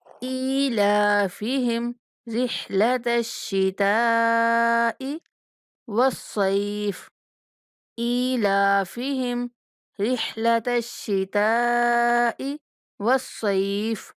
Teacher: حمزہ کے نیچے کھڑا زیر ہے تو اس لیے حمزہ کو 1 سیکنڈ تک لمبا کریں گے، لام کو بھی 1 سیکنڈ تک لمبا کریں گے